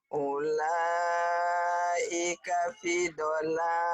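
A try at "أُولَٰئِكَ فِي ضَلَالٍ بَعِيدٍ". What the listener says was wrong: Fi-nya panjang. Fi. Ulaika fi dhalalim ba'id. Tapi limnya ditahan iklab. Ulaika fi dhalalim ba'id.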